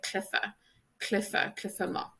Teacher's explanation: So for example, the CH here is pronounced like an F in Connacht